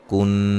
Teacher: نون مشدد پہ غنہ ضروری ہے